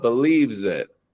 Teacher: when you're getting the Z, you're holding that position with your tip of your tongue going just down here to your gums just behind your bottom teeth and you're letting your voice carry out.